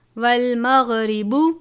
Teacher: ساکن ہونے کی صورت میں با پر قلقلہ کریں گے